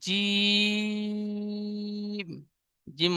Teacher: জিম অক্ষরটি তিন আলিফ পরিমাণ টান দিয়ে পড়বো।